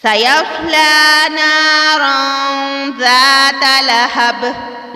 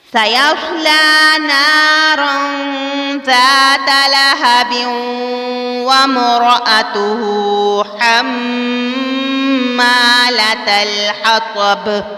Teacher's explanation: قلقلہ کرنا ہے یعنی جھٹکا دے کر پڑھنا ہے، جیسا کہ سَيَصْلَى نَارًا ذَاتَ لَهَبٍ، لہب قلقلہ کرنا ہے۔